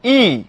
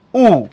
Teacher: জিভ যখন আমি উঁচুতে রাখি এবং উঁচুতে আসা জিভটা সামনের দিকে থাকে তখন উচ্চারিত হয় ই, আর জিভ যখন পেছনে চলে যায় তখন উচ্চারিত হয় উ